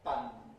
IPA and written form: p⁼an (panne)